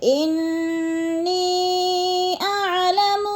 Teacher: لکم، لکم میں بھی اظہار شفوی ہے، غنہ نہیں کریں گے، ان کی نون مشدد ہے سختی سے، جمعوں کے ساتھ ہم نے ادا کرنا ہے، اور نی پہ جو ہے مد منفصل ہے، حروف مدہ کے بعد حمزہ دوسرے کلمے میں آ گیا ہے تو مد منفصل 4 الفی مد ہے، ہم نے اس کو 4 حرکات کے برابر لمبا کر کے پڑھنا ہے